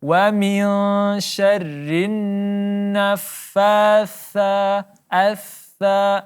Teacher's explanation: makhraj huruf tha di ujung lidah dan di antara gigi atas dan gigi bawah.